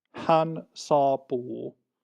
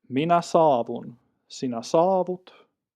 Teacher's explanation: another consonant gradation change from a single P sound to a single V sound